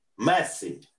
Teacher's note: i'm saying that the stress goes in the first syllable